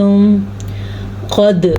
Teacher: قد سب سے پہلے تو قاف کو موٹا پڑھنا ہے کیونکہ قاف حروف مستعلیہ میں سے ہے۔ دال کے اوپر قلقلہ ہوگا کیونکہ دال حروف قلقلہ میں سے ہے